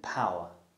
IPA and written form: ˈpaʊə (power)